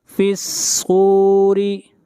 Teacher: فا کو ملائیں گے صاد کے ساتھ اور صاد کو موٹا پڑھیں گے